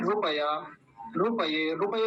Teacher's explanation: रुपया जल्दी बोला जाता है लंबा नहीं खींच क्योंकि छोटा उ होता है उसमें